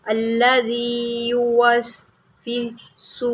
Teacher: یہ لفظ جو ہے وہ موسٹلی غلط پڑھتے ہیں، وا اور سین کو چھوڑ دیا جاتا ہے